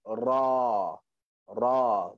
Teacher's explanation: makhraj ra adalah hujung lidah berjumpa dengan langit-langit atas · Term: huruf ra